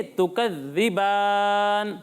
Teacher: بان ناک میں آواز لے جا کر نہیں پڑھنا